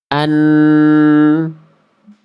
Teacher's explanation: Huruf nun keluar dari ujung lidah yang kita sentuhkan ke langit-langit bagian depan atau langit-langit atas mulut. Jadi huruf nun dilafalkan ujung lidah nempel ke langit-langit depan.